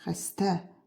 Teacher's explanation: Vurğu ikinci hecaya düşür.